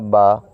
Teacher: با نکالنے کا طریقہ یہ ہے کہ دونوں ہونٹوں کے جو تری والا حصہ ہے وہ آپس میں مل جائیں، تو اس سے نکلے گا با۔